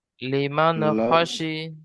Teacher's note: নুন সাকিনের পরে হরুপে হালকি 6টি অক্ষরের মধ্যে থেকে খ এসেছে, তাই একে উম, তাই নুন সাকিনের আওয়াজকে নুন সাকিনের আওয়াজকে বিনা গুণায় জাহির করে তাড়াতাড়ি না পড়তে হবে।